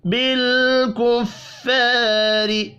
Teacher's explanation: بالکفار، لام ساکن پر قلقلہ نہیں کرنا، الف مدہ کو ایک الف کے برابر کھینچ کر پڑھیں گے، را زیر کی وجہ سے باریک پڑھی جائے گی